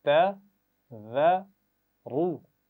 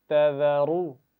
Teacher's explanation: ذال کی آواز میں سیٹی نہیں ہونی چاہیے اور را کو پیش کے ساتھ موٹا پڑھیں گے